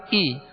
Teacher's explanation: زیر ادا کی ہم نے آواز کو نیچے گرا کے